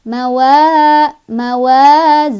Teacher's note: dibaca nya panjang dua harakat · Mawa, wa, matobi'i karena ada alif sebelumnya ada huruf berbaris fathah, dibacanya panjang 2 harokat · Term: Thobi'i